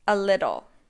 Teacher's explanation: The stress is on the second syllable. The T's in little are pronounced like a D, also known as a flap T.